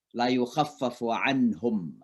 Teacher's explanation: Ya, jadi kalau nun ketemu ha dibaca izhar, jelas.